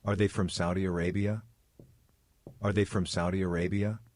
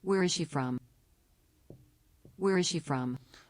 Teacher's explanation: the intonation here in the first kind of question yes no question will raise up at the end of the question